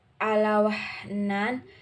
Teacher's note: Hai selanjutnya ada allah wahnan termasuk dalam izhar halqi karena ada huruf nun mati atau sukun bertemu dengan huruf Ain cara membacanya adalah jelas dimulut